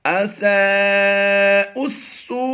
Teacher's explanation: یہاں پر حروف مدہ کے بعد حمزہ اسی کلمے میں ہے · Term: مد متصل